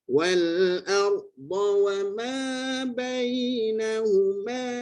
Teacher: Tebalkan sikit lagi pada ra. Wal nipis, ra tebal. Ya, sebab sebelumnya hamzah pada atas ni.